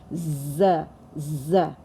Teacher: Z is the sound which doesn't touch our teeth, and it's a little sound of a whistle. It gives the sound of a whistle, z, z, and it's a heavy letter.